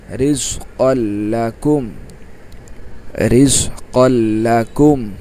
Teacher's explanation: তানবিনের পরে লাম আসছে, ইদগামে বেলা গুন্না, গুন্না ছাড়া পড়তে হবে। রিজ কল, লাম জবর লা, কাপ মিম পেশ কুম, রিজ কল্লাকুম, রিজ কল্লাকুম।